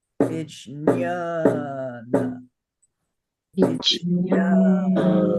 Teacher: it's a word that has 3 syllables, but 4 beats